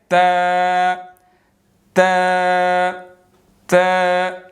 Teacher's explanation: और इसी तरह जो है वो ऊपर वाले सामने 2 दांतों की जड़, यानी उसका पिछला हिस्सा, ऊपर वाले सामने 2 दांतों की जड़, ठीक है। जब ज़ुबान की नोक ऊपर वाले सामने 2 दांतों की जड़ के पीछे लगेगी तो ता अदा होगा